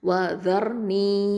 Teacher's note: அப்போது ஜர் ஜர், இது வந்து தஃப்ஹீமாக உச்சரிக்கணும், ஹெவியாக உச்சரிக்கணும். நூன் கெஸ்ரா யாவுல் மத்து நீ 2 ஹரக்கத்தை நீட்டுறோம்